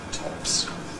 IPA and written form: tɒps (tops)